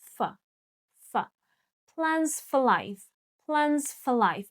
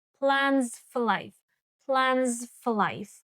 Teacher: You even don't hear that schwa sound in f, f, just as if you are just saying f.